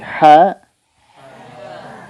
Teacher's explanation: Jangan sampai juga ada e-nya